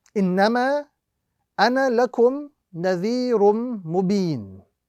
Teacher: The rule is the final alif in the word ana is not read in continued recitation. It is only read when stopping on this particular word.